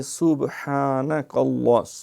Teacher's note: سین باریک ہے، با پہ قلقلہ ہے ، ہا اہتمام سے کھڑی زبر ہے جو اس کا اصل